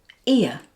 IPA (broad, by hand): ɪə